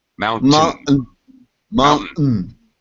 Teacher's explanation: The second syllable is very reduced, just quick tin.